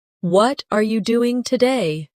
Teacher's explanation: The stress usually falls on what and doing.